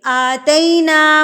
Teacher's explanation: آ کے اوپر جو کھڑی زبر ہے اس کو ہم نے 2 حرکات کے برابر کھینچنا ہے. 2 حرکات کا مطلب ہے 2 الف کے برابر.